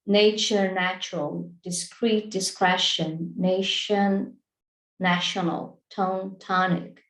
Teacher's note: there is a pattern there that can be helpful so you you change from a tense vowel to a lax vowel